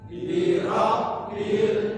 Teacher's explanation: lam qamariah jadi dia dibaca jelas lamnya